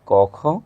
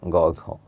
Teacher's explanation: প্রথম দুইটাতে কম্পনের তুলনায় পরের দুইটাতে কম্পন বেশি হয়। তাই প্রথম বর্ণগুলোকে বলে অঘোষ।